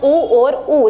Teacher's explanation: जब आप ऊ और ऊ बोलते हैं तो आपके जो होठ हैं उनका आकार कैसा हो जाएगा? होठ से बोले जाएंगे, गोल हो जाएगा। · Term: ओष्ठ्य